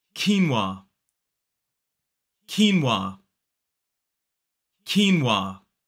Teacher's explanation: 2 syllables, the stress falls on the first.